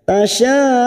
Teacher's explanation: ada mat yang bertemu dengan hamzah dalam satu kalimat, mat wajib mutasil 5 harokat kita panjangkan.